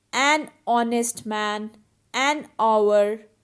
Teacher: So in both these words, H is silent. So hour and honest start with a vowel sound. That is why we have used article an.